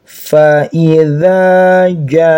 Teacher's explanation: Ada alif panjang dua harakat. · Ada bendera di atasnya sebagai tanda. Ini namanya mad wajib muttasil. Dibaca panjang lima harakat.